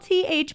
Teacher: th can also make another sound which is a voiced sound that means that my voice box is going to vibrate